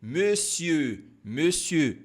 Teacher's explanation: Como é que eu vou pronunciar esse biquinho? Você vai falar o E do bebê, e fazer o biquinho.